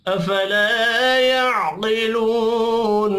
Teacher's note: अफला अलिफ मद्दा है, एक अलिफ के बराबर खींच कर पढ़ेंगे